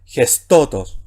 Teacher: leí ges con el espíritu rudo y marco fonéticamente la penúltima sílaba por el acento circunflejo